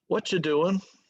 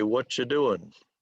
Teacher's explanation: So a lot of times that final G sound will come off. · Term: casual English